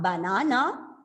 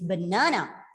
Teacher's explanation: So you bring out, or you pronounce the sounds in the stressed syllables louder, higher, and longer, and you have to bring down the sounds of the unstressed syllables. So the vowel sounds are reduced to the shortest schwa or e sound